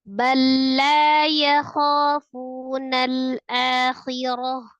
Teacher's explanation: bunyi ta marbutah ketika baca di akhir diwaqaf kan maka sukun ketika sukun dibacanya ha